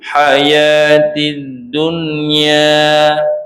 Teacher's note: Ha dunya tu hati-hati jangan sampai dia masuk hidung.